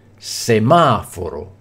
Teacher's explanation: l'accento cade sulla terzultima sillaba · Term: sdrucciole